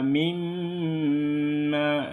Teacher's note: Jadi didengungkan di mim 2 harkat atau 3 harkat. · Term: gunnah musyaddadah